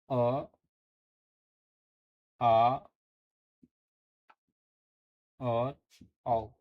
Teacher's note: अ आ और औ का जो उच्चारण स्थान है यह कंठ से होता है